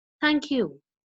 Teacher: I'm starting with a low note